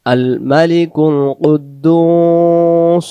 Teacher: দালের পেশটাকে আমরা এক আলিফ টেনে পড়বো যদি দালের পেজে এক আলিফ টান দিতে না পারি এই জায়গা